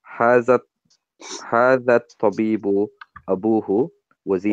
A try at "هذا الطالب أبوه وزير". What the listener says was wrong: It's not Tabib. It's not Tabib.